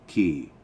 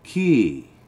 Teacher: Make sure when you say, if you're going to intend to ride something or talking about riding something, make sure you say it in a low tone, key. Because if you were to say key, that means shit.